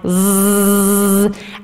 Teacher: There's a buzz created that's kind of the sound of the vocal folds themselves. If you took them out of your body and you could just bring them together, they'd just sound like zzzz.